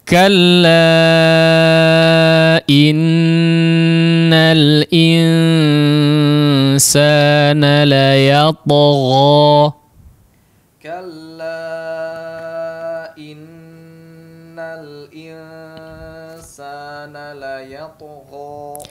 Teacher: di sini ada kalla disebut dengan mad jaiz ya, disebut dengan mad jaiz. Kadarnya 4 harakat ya. Kita ambil yang 4 harakat, meskipun boleh 2 harakat ya.